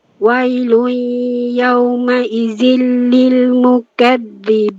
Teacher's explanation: Dia ada berdesiran tu dia jadi safir. Dia jadi macam zai.